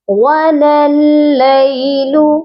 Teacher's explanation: لام کو لام مشدد کے ساتھ ملائیں گے اور درمیان میں دونوں الف کو ہم نہیں پڑھیں گے